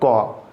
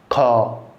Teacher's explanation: ठीक है, अब जैसे कि मैं बोलता हूँ क, जैसे बोल रहा हूँ क, तो क जैसे बोल रहा हूँ, ये जो उच्चारित हो रहा है, जो हवा निकल रही है, ठीक है, वो हमारे कंठ से होकर निकल रही है